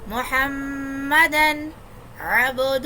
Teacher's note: ہو کو ایک الف کے برابر کھینچیں گے